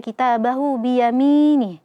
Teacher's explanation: Di sini namanya dalam ilmu tajwid adalah mad silah qasirah ya. Ha-nya dibaca 2 harokat karena ha dhamir ini berada di antara 2 huruf yang berharokat.